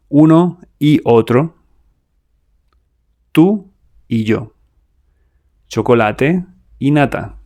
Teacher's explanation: when Y is alone, like the word Y meaning and, it sounds like the vowel I.